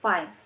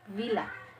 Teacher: Example, V in the word villa. Consonant sounds which are produced by contacting the lower lip and upper teeth, as in sound F and V. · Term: labiodental sound